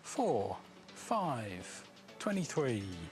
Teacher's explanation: a falling intonation on the minutes